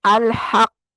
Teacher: اب یہاں دیکھیں قاف پہ تشدید بھی ہے اور پیش کو ہم نے ساکن کرنا ہے. الحق، سختی کے ساتھ اس کو پکڑ کے رکھنا ہے پہلے، اس کے بعد چھوڑنا ہے تاکہ تشدید اچھے سے ادا ہو جائے